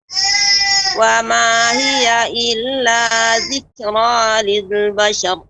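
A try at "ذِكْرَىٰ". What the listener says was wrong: Zikra dan juga ra-nya tebal, Ibu.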